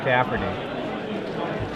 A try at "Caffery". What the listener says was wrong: Caffery. No T. I was doing it wrong too, and I just realized it.